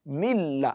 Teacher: as if there is no nun at all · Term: idgham kamil